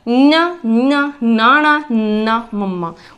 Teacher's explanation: उच्चारण करके देखो इन्हां व्यंजनां नूं, इन्हां व्यंजनां नूं उच्चारण वेले जिहड़ी आवाज़ आ वो साडे नक विचों आउंदी आ, इसलिए इन्हां व्यंजनां नूं असीं नासकी व्यंजन कहंदे आ।